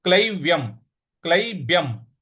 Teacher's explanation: य के ऊपर जो अनुस्वार है उसके आगे म है। इस वजह से इसका उच्चारण भी हम म ले आएंगे।